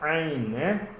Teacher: Terus Ain. Huruf Ain ambil dekat ke tengah-tengah kerongkong